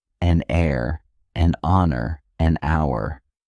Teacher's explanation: the H is silent. So the words begin with vowel sounds and an is used.